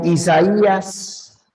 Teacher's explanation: en secuencia abierta cerrada abierta la mayor fuerza de voz recae en la cerrada